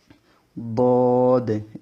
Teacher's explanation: জিহ্বার গোড়ার কিনারা উপরের মাড়ির দাঁতের গোড়ার সঙ্গে লেগে ওইখান থেকে বদ এভাবে উচ্চারিত হয়